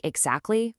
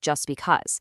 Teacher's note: There's this linguistic pattern in American English called the dropped T. Basically, when a T sound gets squeezed between two other consonant sounds, it often just gets dropped to make the phrase flow better.